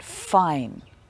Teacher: So your top teeth touch your bottom lip. With f for fine, you don't use your voice box. It's an unvoiced sound